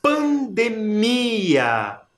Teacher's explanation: Qual que é o som mais forte nessa palavra? É o mi. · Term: sílaba mais forte